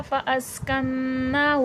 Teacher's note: कन में नून मुशद्दद और खड़ा ज़बर है, गुन्ना होकर खींचेगा।